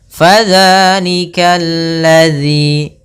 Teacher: Kemudian fadzalikal ladzi, di sini pada lafaz al-ladzinya ada alif lam syamsiyah, yaitu alif lam yang ditulis tapi tidak dibaca